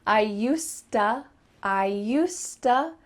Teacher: The word to is just changing to ta.